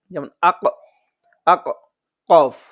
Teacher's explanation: আমাদের জিহ্বাটা যেটা আছে জিহ্বার গোড়া থেকে উচ্চারণ হবে